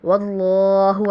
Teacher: واللہ کو پر پڑھیں گے کیونکہ ماقبل فتحہ ہے